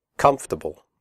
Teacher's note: The word comfortable has 3 syllables, not 4. The OR is silent. We say comfortable, not comfortable.